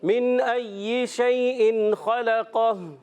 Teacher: نون ساکن کے بعد حمزہ آ گیا ہے، جب کبھی نون ساکن کے بعد حرف حلقی میں سے کوئی حرف آئے وہاں اظہار ہوتا ہے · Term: اظہار حلقی